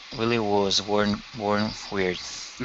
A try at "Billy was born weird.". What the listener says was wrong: Yeah, close your mouth just a little bit more on that vowel. Billy was born weird.